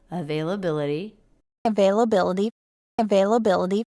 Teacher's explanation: notice that the t is a flap T here